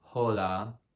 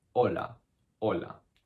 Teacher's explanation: the h if you see it is always silent it's obviously a super rookie mistake to say like hola everyone